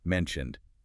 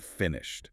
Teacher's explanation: the ed on mentioned sounds like a D, but on finished, it sounds like a T.